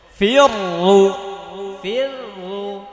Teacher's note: এটা মোটা হবে কারণ রয়ের ওপর পেশ।